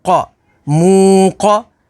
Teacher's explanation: قاف حروف مستعلیہ میں سے تو اسے پر یعنی موٹا پڑھیں گے